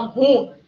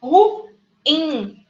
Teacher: Mas não tem um acento no ru. A ênfase é no in. Ru-in. É uma oxítona.